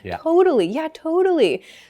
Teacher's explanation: That O sound gets sort of opened up a bit.